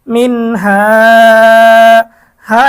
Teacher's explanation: নুন সাকিনের পরে ইজহারের হরফ হা এসেছে গুণ ছাড়া স্পষ্ট পড়তে হবে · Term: নুন সাকিনের ইজহার